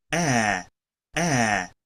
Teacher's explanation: el sonido e es una mezcla o está como intermedio entre lo que viene siendo una a y una e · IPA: æ